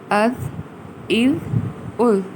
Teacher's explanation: دال کو بھی نرمی سے ادا کریں گے جیسے کہ سا کو ادا کیا جاتا ہے، اسی پیٹرن پر اس کو نرمی سے ادا کیا جائے گا، اور سیٹی کی آواز یعنی زا کی طرح اس میں سیٹی کی آواز نہیں آئے